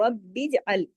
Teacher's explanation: با پہ کلکلہ ہوگا، رب اجعل میں رب سختی سے با کے ساتھ جڑے گا، پھر جیم پہ کلکلہ ہوگا، رب اجعل، عین کو عین کی طرح پڑھنا ہے۔